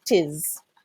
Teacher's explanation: you just kind of brush the T and then go straight for the is